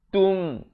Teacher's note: Kun, ikhfa dua harakat, ikhfa hakiki. Tum, izhar syafawi, jangan panjang, bunyi saja tum terus masuk